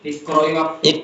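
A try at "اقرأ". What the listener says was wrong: Sukunkan. Enggak, sukunkan. Sukunkan. Jangan ikro'i, enggak boleh. Perintah itu sukun. Fi'il amr itu sukun. Kecuali ada objeknya. Iya, sambungannya. Enggak bisa disambung, kan ada wanya itu. Kecuali ada ikro'i darsa kayak tadi di atas itu kan.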